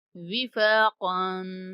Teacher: قاف کو پر پڑھیں گے اور غنہ بھی کریں گے